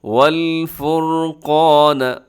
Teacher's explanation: قاف موٹا پڑا جاتا ہے ہمیشہ، ساتھ الف وہ بھی موٹا ہو جائے گا، اور را بھی موٹا پڑا جاتا ہے کیونکہ را سے پہلے والے حرف کے اوپر پیش ہے.